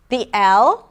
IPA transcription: l